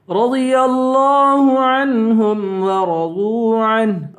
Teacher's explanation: را کو پر پڑھیں گے ضاد کو بھی پر پڑھیں گے رضی اللہ لفظ اللہ کے لام کو بھی پر پڑھیں گے